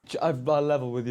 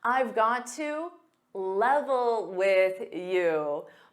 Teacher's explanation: got to becomes Gada in spoken English